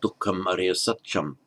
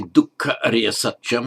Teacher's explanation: You do occasionally get that M inserted just euphonically to make it easier to pronounce. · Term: euphonic insertion of an M